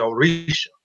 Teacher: So a lot of people spell Orisha Orisha, but it's Oris diacritic A. So that diacritic mark makes the S pronounced differently. So you get the sh sound, the SH sound, instead of the S.